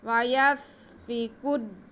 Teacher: काफ को थोड़ा रुक के दाल के साथ मिलाएंगे।